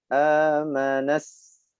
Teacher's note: Pertama ditekan, disertai dengan desis yang memanjang, sifat dari sin.